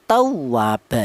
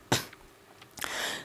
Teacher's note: Yang wawu bertasdid yang didahului harokat fathah contohnya tawwaba ya. Tawwa ditekan, tawwaba seperti itu.